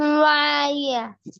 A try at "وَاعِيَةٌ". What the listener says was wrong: واعیہ، یا کے بعد ہا ساکن کی آواز آنا ضروری ہے نا بھائی. واعیہ.